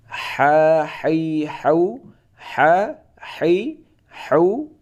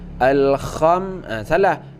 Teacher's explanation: huruf ha yang ada di tengah tenggorokan